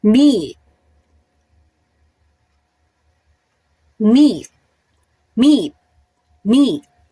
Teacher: Meet. So, it is front part of the tongue is raised towards the hard palate. So, front siya. · when it comes to the height of the tongue, siya ay high.